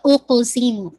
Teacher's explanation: قاف پہ انشاءاللہ آپ کی باؤنسنگ ہے، قلقلہ ہے، اور جو لا کو اسٹریچ کریں گے 4 to 5 مد الجائز منفصل ہے.